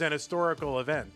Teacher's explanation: The H is silent in it's an historical.